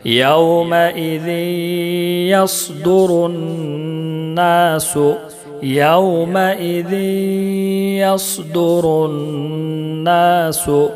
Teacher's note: نون مشدد ہے ایک الف کے برابر غنہ کریں گے